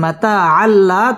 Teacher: মাতা আল্লাহ তানবিনের বামে লাম আসছে, লাম ইদগামে বেলা গুন্নার হরফ, এখানে গুন্না ছাড়া মিলিয়ে পড়তে হবে। মাতা আল্লাহ লাম তাসদিদ ওয়ালা হরফ।